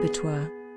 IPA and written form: ˈæbətwɑː(r) (Abattoir)